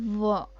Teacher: हमारे जो नीचे वाला होंठ है, वो ऊपर दांत को भी टच करता है, तो इसका होंठ का होंठ किसको स्पर्श कर रहा है, दांत को स्पर्श कर रहा है, इसलिए ये बन जाएगा दंतोष्ठ।